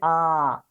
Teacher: विवृत्त स्वर जिन स्वरों का उच्चारण करते समय मुख पूर्ण रूप से खुल जाता है